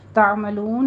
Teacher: تعملون میں عین کو آپ نے وسط حلق تک لے جانا ہے